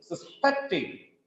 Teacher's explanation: Suspecting is a verb here. The stress is on second syllable.